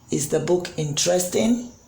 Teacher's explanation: is the book interesting the pitch goes up